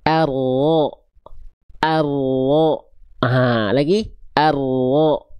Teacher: Jadi yang disentuhkan punggung lidah kita ke langit-langit di atasnya. Nah, ujung lidah kita nggak sampai nempel, makanya dia ada celah. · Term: huruf ro